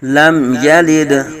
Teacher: میم ساکن میں اظہار شفوی ہو رہا ہے ، میم ساکن کو ہلائیں گے بھی نہیں، لم نہیں کریں